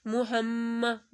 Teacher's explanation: میم کے اوپر تشدید ہے، میم 2 دفعہ بھی پڑھا جائے گا اور گنا بھی کیا جائے گا